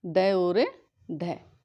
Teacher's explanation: ठीक है। जब हम वर्णों का उच्चारण करेंगे तो हमारी जो जीभ है वो झटके के साथ जो है उलटकर तालु को स्पर्श करेगी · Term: उच्छिप्त वर्ण